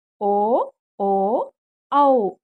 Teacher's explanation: కంఠోష్యములు కంఠం మరియు పెదువల నుండి పుట్టినవి